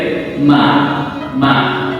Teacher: tempat makhraj huruf mim itu adalah pada asyafatain, 2 bibir